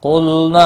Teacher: قاف مستعلیہ پر پڑھا جائے گا، لام ساکن کو ہلانا نہیں۔